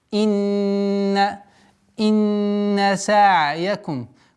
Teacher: Инна, обращаем внимание на четкость произношения огласовки кесра. Удержание назализации в размере 2 огласовок.